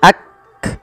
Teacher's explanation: Cara membacanya yaitu bacaan syiddahnya dulu, yaitu kaf itu ditahan suaranya ak, baru dikasih hamas